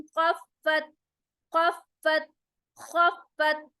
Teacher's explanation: खा में scratching sound मोटा होगा। फत, फा के ऊपर शद आ रहा है, तो उसको हम सख्ती के साथ डबल टाइम प्रोनाउंस करेंगे।